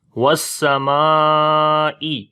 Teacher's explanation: واو کو سین کے ساتھ ملائیں گے اور سین کے اندر صفت ہمس اور صفیر دونوں ہوں گی، یعنی ہمس کا مطلب سانس جاری ہوگا سین کے اندر، وس اور سیٹی کی بھی آواز آئے گی صفت صفیر کی وجہ سے۔